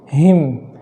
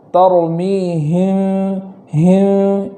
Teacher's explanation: اخفاء شفوی والا جو میم ہو، اس میم کو ادا کرنے میں کمزوری کے ساتھ اس میم کو پڑھیں گے ، جیسے ترمیہم، ہم اس طریقے سے اخفاء شفوی کریں گے